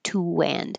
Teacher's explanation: this invisible w happens because we're going from rounded lips from to unrounded lips